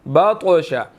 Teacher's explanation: طا جو ہے وہ ساکن ہے، قلقلہ بھی ہوگا کیونکہ حروف قلقلہ میں سے بھی ہے اور موٹا بھی اس کو ادا کرنا ہے، بطشا نہیں پڑھنا، بطشا، ٹھیک ہے۔